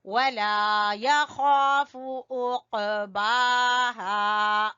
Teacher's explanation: काफ के ऊपर कलकला करेंगे और बा को खड़ी जबर की वजह से खींचेंगे और हा को अलिफ मद्दा की वजह से।